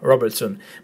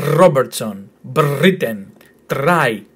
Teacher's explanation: I know even 'try' or 'Britain' you sort of round the 'r'. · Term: rounded 'r'